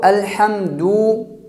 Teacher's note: مثلا الحمد دال کے اوپر پیش ہے، الحمد کو الحمدو یعنی دال کی پیش کو لمبا کر کے پڑھ لیا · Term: حرف کو بڑھانا